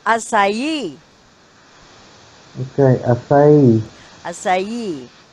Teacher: The stress is a third syllable. Third syllable, or you can say last syllable